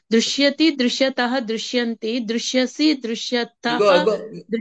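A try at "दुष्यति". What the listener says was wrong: మీరు అరుకారం పలుకుతున్నారు, అరుకారం కాదు, ఉకారం.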